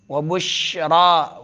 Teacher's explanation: شین میں تفشی ہے، آواز منہ میں پھیلتی ہے۔ وبشرا، را کو پر پڑھنا ہے۔